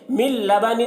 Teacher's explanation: مل لبن, یہاں پر بھی دیکھیے نون ساکن کے بعد لام ہے, تو نون ساکن کو لام سے ملا کر پڑھیں گے, غنہ نہیں کریں گے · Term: ادغام لام